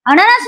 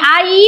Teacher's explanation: अननस म्हणायचं तर अचा उच्चार पटकन होईल, आणि आई म्हणायचे तर आचा उच्चार दीर्घ